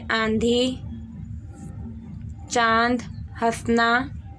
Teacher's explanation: जिन ध्वनियों के उच्चारण के समय हल्की सी वायु मुख से व हल्की सी वायु नाक से निकली वो अनुनासिक कहलाते हैं।